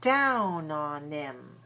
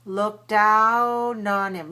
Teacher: did you hear that linking there no h for him